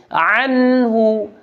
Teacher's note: عین ادا کرنا ہے، وسط حلق سے عین ادا ہوگی